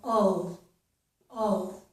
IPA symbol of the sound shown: əl